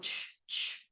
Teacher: And this one is sort of a combination of a stop and a fricative · So this first example here is the sound CH, that ch sound. You can kind of feel how you make that stop, that t, and then that sh, which is a fricative sound. So you go ch, ch. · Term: affricate